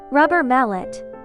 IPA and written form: ˈrʌbər ˈmælɪt (Rubber Mallet)